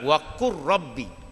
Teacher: Jangan tebal ra tinggi sampai 3 kali. La hadaf, dia hilang. Masuk ra terus. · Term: Idgham mutaqa ribain